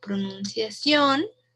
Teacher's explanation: en esta palabra pronunciación estamos haciendo más énfasis en on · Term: sílaba tónica